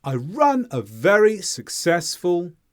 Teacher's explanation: sounds so the stressed Sounds here are run very and successful between these stress sounds we have a fall in our intonation